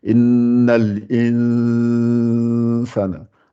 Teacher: C'est ça qu'on appelle la dissimulation. On sort le son 50-50 par le nez et par la bouche.